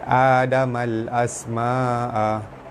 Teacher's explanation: alif lam bertemu hamzah, hukumnya alif lam qamariyah, lam dibaca jelas